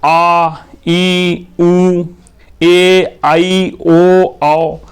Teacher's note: तो वे स्वर जिनके उच्चारण में स्वरों की तुलना में लघु स्वरों की तुलना में ज्यादा समय लगता है। दुगना समय लगता है। दीर्घ स्वर कहलाते हैं। द्विमात्रिक स्वर कहलाते हैं।